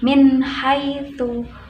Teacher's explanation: nun sukun bertemu dengan ha, maka harus dibaca jelas. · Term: idhar